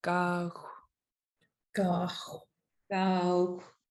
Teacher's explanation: G with a high tone AA and then a rounded X at the end